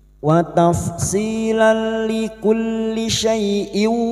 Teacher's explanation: fathatan tanwin bertemu lam masuk tanpa mendengung, tanpa ditahan lama-lama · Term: Idgham bila guna